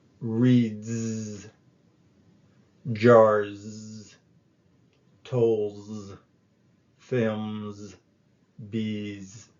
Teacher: So the final S is pronounced Z, as in buzz, after voice sounds. Examples of voice sounds include d, o, b, and all vowel sounds.